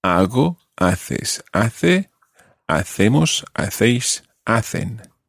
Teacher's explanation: notice in every single one of them, you've got a silent H